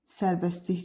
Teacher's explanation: Sərbəstlik sözü isə sərbəstlik kimi tələffüz olunur. Deməli, burda səs düşmü baş verir. T samiti düşür. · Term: səs düşümü